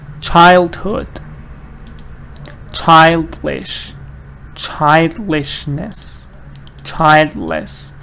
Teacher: All of them stress is on the first part.